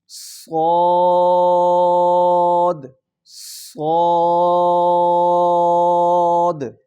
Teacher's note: صاد، سیٹی کے ساتھ اور پر کر کے ادا کرنا ہے